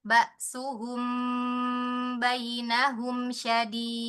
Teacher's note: Mim sukun ketemu bnya mau ditahan.